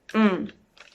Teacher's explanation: la M su boca es medio cerrada y es una nasal bilabial